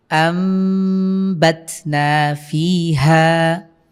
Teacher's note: এরপরে দেখুন কি আছে, আমবাতনা ফিহা, এখানে নুন সাকিনের পরে বা এসেছে, আমরা এটাকে মিম দ্বারা পরিবর্তন করে পড়ব। আম আম, আপনারা খেয়াল করছেন এখানে কিন্তু আমি মিম পড়ছি, নুন সাকিনের বদলে মিম উচ্চারণ করতে হবে।